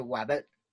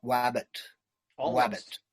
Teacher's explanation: i think in linguistics it's called um it's a labio dental approximant